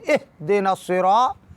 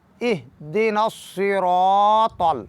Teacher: ہا کو ساکن پڑھنا ہے مگر متوسط انداز میں